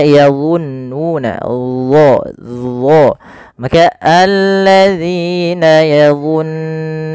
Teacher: Yang pertama sifat isti'la yaitu pangkal lidah kita terangkat, yang kedua yaitu sifat idbaqnya, lidah itu lebih melekat ke langit atas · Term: huruf dha